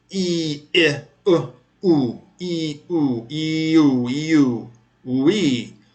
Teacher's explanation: you move from the front to the back of the tongue